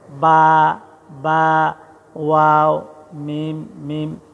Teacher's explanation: এরপর 15 নং মাখরাজ, 2 ঠোঁটের মধ্যস্থল হতে পড়া হয়